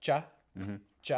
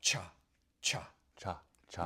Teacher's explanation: just a regular CH sound and an aspirated CH sound can totally change the meaning of a whole word